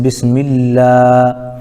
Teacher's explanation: لفظ اللہ کے لام سے پہلے میم کے نیچے زیر ہے، اس لیے لفظ اللہ کے لام کو باریک پڑھیں گے